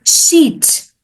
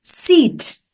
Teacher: a Spanish speaker might struggle with the word sheet versus seat because sh sound doesn't exist in Spanish